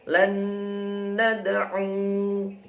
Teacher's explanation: Sama kalau wasol dibaca wa pendek, tapi kalau wakof wanya disukun sehingga u-nya menjadi panjang.